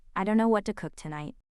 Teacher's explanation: Don't know. It rolls into dunno, almost like a shrug. We mumble it whenever we're a bit unsure.